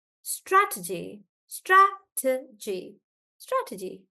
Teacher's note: so stress is on Strat